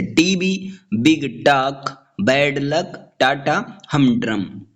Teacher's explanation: स्पॉन्डी जो है दो स्ट्रेस्ड सिलेबल से बना होता है,